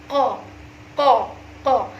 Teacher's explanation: pangkal lidah dan anak lidah saling mendekat aja, saling mendekat, kemudian suara dikeluarkan dengan dorongan nafas ya, tidak ditekan tapi hanya berdekatan saja. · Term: huruf qaf